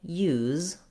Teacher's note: letter U says a glide sound, like a Y sound, plus the oo sound